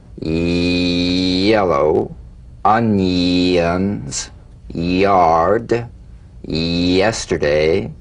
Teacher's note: feel the y buzz quickly cut off as it slides into the following vowel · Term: tongue front consonant